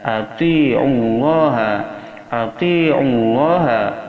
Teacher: ain berada di tengah tenggorokan makharijul hurufnya